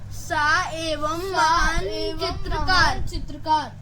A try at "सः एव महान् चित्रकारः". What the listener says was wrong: इसको बोलेंगे सह एव महान चित्रकारः, ठीक है? विसर्ग लगा है ना, हा का उच्चारण आता है, ठीक है?